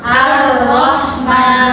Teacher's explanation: itu alif lamnya tidak dibaca jelas karena ada tasdid. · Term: alif lam syamsiyah